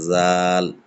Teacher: জালটাকে জিভের আগালে হালকা হাওয়া দিয়ে বের করতে হবে, জাল। ঠিক এমনি হবে জা, জাটাকে একটু ঝাঁঝালো করে জিভের আগালেই, আগালের থেকে একটু ভিতর দিয়ে সাইড থেকে, জা।